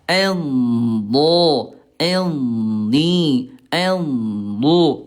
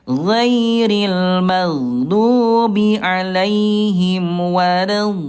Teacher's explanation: Ini memanjang ayah Bunda, jangan tergesa-gesa. Suaranya memanjang ayah Bunda mulai dari pangkal sisi lidah sampai ke ujungnya ya. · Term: huruf do